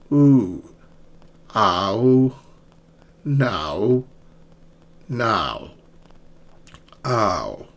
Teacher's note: So start with a and glide to round.